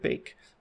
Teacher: There are many different types of Ks, such as the palatal K in the word like cute, or we have an aspirated K in the word cup, or even an unaspirated K in the word bake